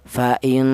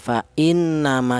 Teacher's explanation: Jadi artinya gunnah itu ada suara berdengung. Adapun panjangnya dengung yaitu 2 harokat atau 2 ketukan.